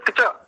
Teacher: ठीक ऐसे ही नीचे देखिए, हलंत क, हलंत च और अ, किचा, इसको बोलेंगे किचा। चा पे थोड़ा हम अधिक बल देंगे तो शुद्ध उच्चारण होगा, और का को बहुत थोड़ा सा किचा, जैसे किया ऐसे ही किचा।